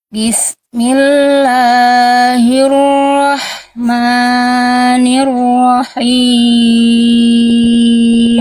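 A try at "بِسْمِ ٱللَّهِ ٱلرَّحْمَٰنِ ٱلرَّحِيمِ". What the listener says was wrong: Udah bagus Bunda, hati-hati tapi di bagian la ini basmalahnya dan ma ini cuman fathah tegak Bunda. Jadi cukup 2 harokat aja. Jangan sampai dibaca Bismillahirrahmanirrahim. Itu kepanjangan. 2 harokat aja. Bismillahirrahmanirrahim.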